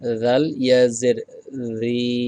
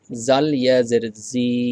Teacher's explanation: জিহ্বার আগাটা সামনের উপরের দাঁতের আগার সাথে লাগিয়ে বলতে হবে, জাল ইয়াজের রি।